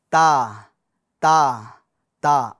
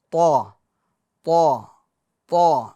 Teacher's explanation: یہ تا یہ باریک ہیں، ٹھیک ہے، ہم اس کو باریک ادا کر رہے ہیں، پور یعنی موٹا نہیں پڑھ رہے ہیں، اور یہ والی جو طا ہے اس کو ہم پور پڑھ رہے ہیں تھوڑا، طا طا طا، ٹھیک ہے، اور یہ والا تا تا تا۔